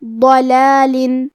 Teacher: ضاد کی ادائیگی زبان کے کروٹ اور اوپر کے داڑھوں کے جڑ سے ہے، ضاد حروف التفخیم میں سے بھی ہے، تو ہم یہ حرف کو بھاری آواز میں اور منہ پھلا کے پڑھیں گے.